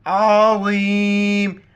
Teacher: आइन को गले से अदा करेंगे